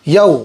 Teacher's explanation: واولین ہوگا، نرم آواز کے ساتھ جلدی پڑھیں گے